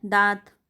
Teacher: अगर चंद्र बिंदु लग जाएगा तो हवा मुख के साथ साथ नाक से भी निकलती है, और इन्हें अनुनासिक स्वर कहते हैं।